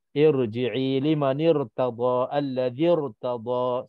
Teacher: Semua kalau kita wasalkan hamzah tu tak dibaca, maka itulah hamzah wasal ataupun ra yang berbaris mati ditebalkan disebabkan sebelumnya ada hamzah wasal